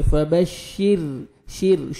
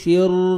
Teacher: را ساکن سے پہلے زیر آئے گا تو را کو باریک پڑھیں گے. فبشر شر شیر نہیں پڑھیں گے, پر نہیں کرنا.